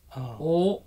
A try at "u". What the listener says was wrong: U, O is different. U. Spanish U is U. U. But Japanese U is U. U.